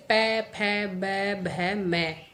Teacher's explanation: अपने होठों को आपस में मिलाते हैं। बिना होठों को मिलाए हम उनका उच्चारण नहीं कर सकते। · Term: ओष्ठ